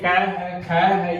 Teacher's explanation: इस कै को बोलते समय कै की भी आवाज आवे है और साथ में ए की भी आवाज आवे है।